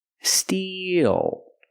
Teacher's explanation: We use the long E plus the dark L. Steal. E like green beans.